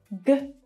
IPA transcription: g